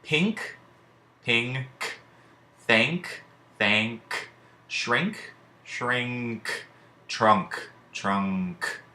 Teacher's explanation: N represents the sound we associate with the digraph NG in the words pink, thank, shrink, trunk